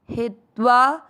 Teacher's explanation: ही की मात्रा छोटी, लंबा नहीं खींचेंगे, आधे त के साथ वा